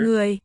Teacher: it's a triphthong, with a vowel sequence of 3 components. The U and the O have the little rice grain, and O is falling, marked as falling.